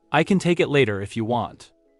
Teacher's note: The word can is reduced. The word it is reduced.